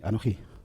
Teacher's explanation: empieza con el Anoji, con el acento en la última sílaba · La palabra Anoji, cuando empieza frase, se pronuncia así, Anoji. Es la última sílaba donde recae el acento.